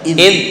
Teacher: ini zal nggak boleh memantul